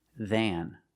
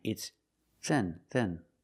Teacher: If you link your words and say it all together, he's older than his brother, it's not than, it's then. Because the word than is not stressed, the sound is shorter.